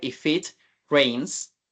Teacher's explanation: Entonces, un tip acá para pronunciar que se escuche como más fluido sería unir el sonido de la consonante, de la última consonante, con el sonido de la primera vocal